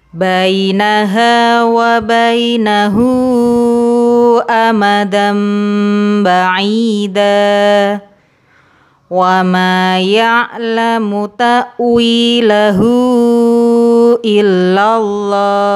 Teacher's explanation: Apabila hak dhamir bertemu hamzah, cara membacanya dipanjangkan 4 atau 5 harokat. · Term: Mad silah kubro